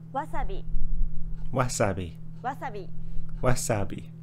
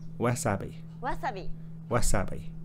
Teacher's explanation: Japanese isn't a stress timed language like English so instead of stressing the second syllable like wasabi make it even throughout